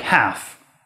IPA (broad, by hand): hæf